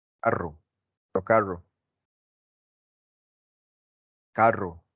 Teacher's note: Y casi que en el resto de América Latina es vibrante múltiple. Es el sonido vibrante múltiple.